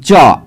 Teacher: तो च का उच्चारण जो होगा ना वह तालू के हिलने डुलने से होगा